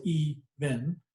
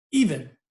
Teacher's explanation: So even, two syllables, even. The eve is the stressed and the in is the unstressed. And that's if you say even, the part of even that you hear the most is the eve over the in.